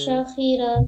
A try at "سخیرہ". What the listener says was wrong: دیکھیے شین نکال دی یہاں پہ, سین پڑھیے. سخیرہ.